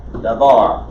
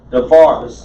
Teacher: Davar, the accent on the second syllable. But when you make it davarim, now you have 3 syllables, and you have to hurry through the first syllable.